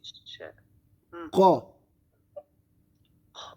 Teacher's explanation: Au fond de la langue, au fond de la bouche